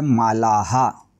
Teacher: आ या स्वरावर विसर्ग आलाय म्हणून उच्चार करायचा आहे मालाहा